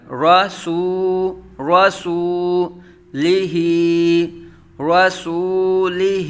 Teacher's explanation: را اور لام کو بغیر کھینچے، سو اور ہی کو کھینچ کے پڑھا